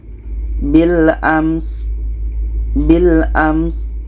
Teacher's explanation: Sin ini sifatnya hamas maka ada anginnya.